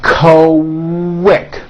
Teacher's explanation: the word quick is pronounced with a K and a strong W sound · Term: Q sound